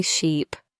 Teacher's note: It's all about vowel length and tension. In sheep, your tongue is higher and the sound is longer.